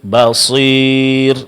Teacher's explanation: Kemudian terakhir, kesalahan yang juga terjadi dalam pengucapan mad ya adalah khaltu sautiha bi syai'in min sautil gunnah. Dalam pengucapannya mencampur suara mad ya dengan sedikit daripada gunnah, yaitu disertai dengan dengung.